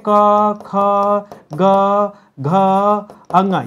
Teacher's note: कंठ वर्ण में क ख ग घ अंग ये आते हैं